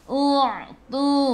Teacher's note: U'tu masuk ke dalam ain ada sukun. Ingat ain daripada kerongkong bukan daripada hidung.